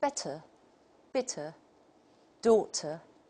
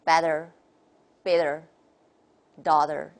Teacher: very conspicuous characteristic in the American model flapping 就 是 弹 舌 头 的 这 个 音。